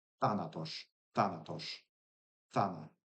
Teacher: Basically a plosive, like an interdental plosive kind of thing